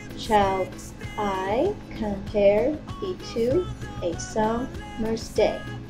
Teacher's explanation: Do you see how the line is separated into 5 parts with the latter part accented? This is why the line is called pentameter, and the unaccented accented marks make it iambic.